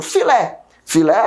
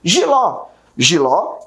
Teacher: minha última sílaba é pronunciada com mais força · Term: oxítonas